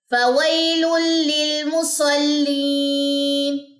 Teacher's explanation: یہاں پہ ہم نے غنہ نہیں کرنا، تنوین کے بعد لام آ رہا ہے